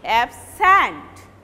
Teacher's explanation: when you are pronouncing it as a verb, you will pronounce the second syllable loudly